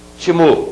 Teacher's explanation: a antepenúltima é a que é mais forte · Eu tenho a última, a penúltima e a antepenúltima. A antepenúltima é a que é a mais forte. Portanto, se trata de uma palavra proparoxítona.